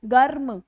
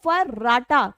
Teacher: रा बोलने में कंपन जैसा महसूस होता है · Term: प्रकंपित